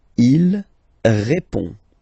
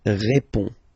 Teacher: Il répond. So, final D is not pronounced. You will only have this on nasal sound at the end.